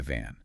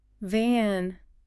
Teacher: Now try van. Your top teeth gently touch your bottom lip, similar to B, but this time you engage your vocal cords, creating a slight vibration.